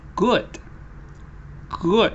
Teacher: when you're saying the short one your lips are rounded a little your lips move forward a little your jaw moves upward a little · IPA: /ʊ/